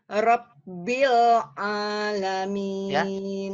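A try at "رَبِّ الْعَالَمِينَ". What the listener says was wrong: Ditekan dulu, Bu ya. Rabbil, ya. Bil bersih. Bersih dari ain. Rabbil Alamin.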